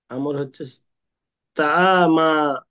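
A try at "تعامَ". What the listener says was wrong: টান হবে না।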